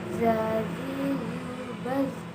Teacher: Dengan menyentuhkan ujung lidah dengan dinding dua gigi seri bagian atas, suara mengalir dengan lembut tanpa diiringi dengan mengalirnya udara.